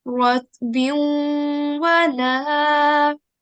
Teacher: we need to hold for 2 seconds for our nasal sound